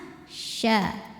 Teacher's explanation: Sya nyebar angin lagi, keluarnya dari tengah lidah ke langit-langit tengah.